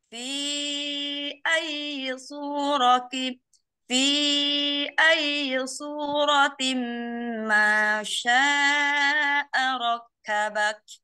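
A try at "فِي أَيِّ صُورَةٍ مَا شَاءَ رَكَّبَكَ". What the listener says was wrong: Ronya lebih tebal lagi. Ro. Ro. Ro.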